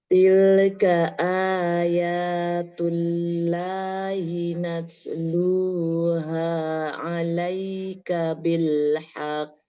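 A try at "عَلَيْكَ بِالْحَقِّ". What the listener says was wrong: Alaika bil haqqo. Haqqo langsung tidak haqqo. Hak langsung sukunkan ke qaf ya. Tasdid naber haqqo.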